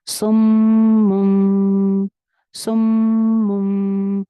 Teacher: पहले पे इक़लाब हो रहा है और प्लस दो गुन्ना के साथ, एक मीम मुशद्दद का गुन्ना, एक इक़लाब का गुन्ना, सुम। पहला गुन्ने में होंठ अच्छे से ज्वाइन हो रहे हैं, सुम। दूसरे गुन्ना में होंठ हल्के से ज्वाइन हो रहे हैं।